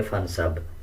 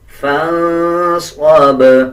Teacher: اسی طرح آگے دیکھیں صاد کو موٹا پڑھا جائے گا اور با کے اوپر جزم ہے، جب وقف کریں گے تب با کو قلقلے کے ساتھ ادا کیا جائے گا۔